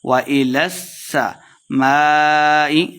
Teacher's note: وإلى السماء سین مشدد ہے، لام کو سین کے ساتھ ملانا ہے، لام زبر سین لس۔